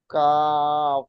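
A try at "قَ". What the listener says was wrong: নয়, এটা কফ, নক্তাওয়ালা কফ। কও। আচ্ছা, এখানে আপনি এটা কফ হয়ে যাওয়ার কফ পড়লেন, এটা কফ হবে না। কফ ও যাবার কও পড়েন।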